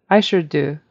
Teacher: the American U is very kind of long and your lips are rounded